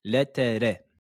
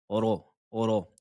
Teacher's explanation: La lettre ro avec une fatha est prononcée de façon emphatique. Ne dites pas le, te, re.